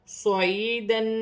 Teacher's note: صاد موٹا حرف ہے، سیٹی والا حرف ہے، سیٹی کے ساتھ ادا کیا جائے گا۔ یا ساکن سے پہلے زیر ہے، یا مدہ بنے گی، ایک الف کی مقدار کھینچ کر پڑھا جائے گا۔